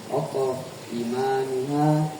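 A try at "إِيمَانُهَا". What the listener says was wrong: Panjang inya, panjang imanuha.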